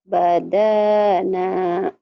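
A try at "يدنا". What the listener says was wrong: Walaupun cuma beda titik satu, tapi salahnya total karena artinya lain. Badana sama yadana beda. Yadana, kemudian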